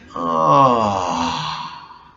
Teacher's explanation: it's used 3 times and done in a descending tone like ah. Kind of fun, huh?